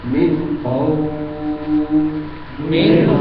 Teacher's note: واو ساکن اور اس کے پہلے زبر لین کی آواز آ رہی